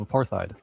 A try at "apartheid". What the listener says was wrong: It's apartheid. I've never heard it pronounced with the H. Yeah, I've never heard it said that way.